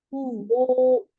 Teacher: sekarang hu-nya itu ada masilah kubroh 4 atau 5 ketukan